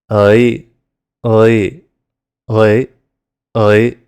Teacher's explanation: First the short U sound, and then adding E after it.